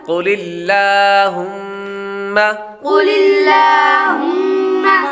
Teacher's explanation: قاف حروف مستعلیہ میں سے ہے، اس لیے اس کو پر پڑھیں گے۔ لفظ اللہ کے لام سے پہلے حرف یعنی لام کے نیچے زیر ہے تو لفظ اللہ کے لام کو باریک پڑھیں گے۔